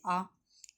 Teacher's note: इस स्वर के उच्चारण में मुख द्वार पूरा खुला होता है। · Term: विवर्त स्वर